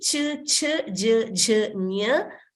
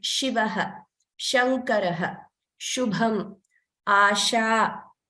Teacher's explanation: The way we pronounce this sh is pronounced similarly. However, when we say ch, then the tongue is actually touching the upper portion of the mouth, but for sh, it doesn't. It just moves upward, but it curls downward, and then the middle portion moves upward.